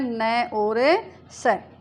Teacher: जिन वर्णों के उच्चारण में जिह्वा का अग्रभाग दांतों से थोड़ा ऊपर मसूड़ों से टकराती है वे वर्तस्य वर्ण कहलाते